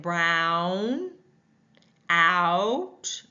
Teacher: an a with that horseshoe a or ooh together a a tongue starts low moves high back